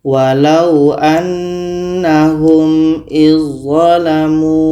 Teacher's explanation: Bunyi dzal sudah sempurna masuk ke dha. Dzal tidak kita baca lagi. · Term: idgham kamil